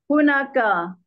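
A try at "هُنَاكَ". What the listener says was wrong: hunaka nak panjang hunaka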